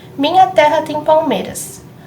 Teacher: se a gente identificar a sílaba tônica, a gente consegue ver que é mei, em palmeiras. Então, o ras, a última sílaba, é desconsiderada na contagem de sílabas poéticas.